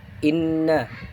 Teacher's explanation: Yang pertama itu ada gunnah yang ada pada kata inna, terjadi karena nun bertasydid. Cara bacanya dibaca dengan mendengung selama 2 harokat